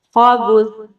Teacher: خا کو موٹا، سا کو نرمی سے